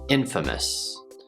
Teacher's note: even though the word famous has a long A in it, the word infamous does not. The A turns into a schwa sound. Infamous. So we have 3 syllables.